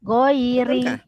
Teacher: Ro berbaris bawah dibaca nipis. Dibaca dengan nipis.